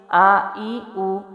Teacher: حمزہ حلق کے نیچے والے حصے سے